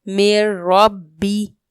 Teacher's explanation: را اور لام میں ادغام بغیر غنہ کے کیا جائے گا